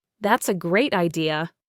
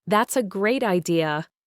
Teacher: if I think it is a terrible idea, I might say, That's a great idea, with a low, rising, drawn-out tone. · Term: high falling tone